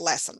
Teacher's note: lesson has the stress on the first syllable